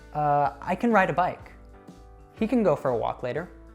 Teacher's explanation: So instead of saying a strong can, we'll usually reduce it to kən. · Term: schwa sound